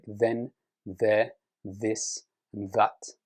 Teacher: the hard the requires a vibration. The soft th doesn't.